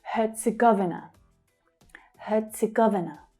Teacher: Hear the T sound that's added there.